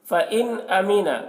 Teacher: نون ساکن کے بعد حروف حلقی میں سے حمزہ ہے، نون میں اظہار ہوگا، نون کو ظاہر کر کے جلد پڑھیں گے۔